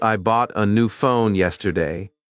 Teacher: the words bought, new phone, and yesterday may carry the main stress. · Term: sentence stress